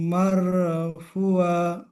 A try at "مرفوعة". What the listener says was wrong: মারফুআ। ফুটা টান হবে, মারফুআ।